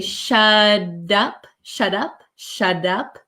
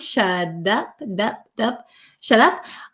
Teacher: my tongue goes up like a D sound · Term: soft D sound